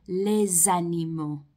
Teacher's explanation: we're using liaison to link it to the previous word le · You hear the S as a Z sound, les animaux.